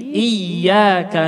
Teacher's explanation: Harus kita membaca dengan suara tertekan, tasydid iyyaka